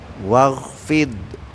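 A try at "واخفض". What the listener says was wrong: Gerak ini di sini dia, lidahnya naikkan semua. Tapi jangan dikasih de ya.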